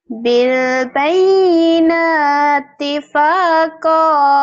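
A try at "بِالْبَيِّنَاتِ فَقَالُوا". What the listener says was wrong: Panjang pendek. Bukan pak, faqalu. Kok yang panjang?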